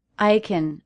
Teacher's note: So it's a function word, and I'm reducing it to kin.